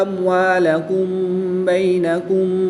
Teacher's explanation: میم ساکن کے بعد حرف با ہے تو یہاں پر اخفاء شفوی ہوگا، یعنی غنہ زمانے کر کے پڑھیں گے